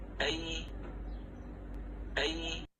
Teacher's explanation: Middle part of the tongue is raised toward the middle part of the upper palate, okay? But no contact. There is space. And the lower jaw is lowered.